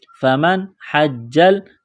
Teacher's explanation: یہاں نون ساکن کے بعد حا ہے، حروف حلقی ہے تو غنہ نہیں کریں گے